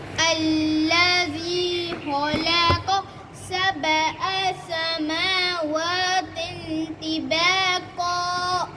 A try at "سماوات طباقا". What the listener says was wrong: झटका ना लगाओ समावा इस तरह नहीं سماوات طباقا